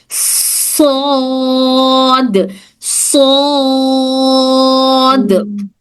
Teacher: सौद मोटा पढ़े जाने वाला लेटर है। ये भी भारी साउंड है। इसमें भी हवा निकलेगी।